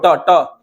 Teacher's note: देखना जो जीभ होगा ना सबसे ऊपर जाकर सटेगा ट में, तो उसको बोलते हैं मूर्धा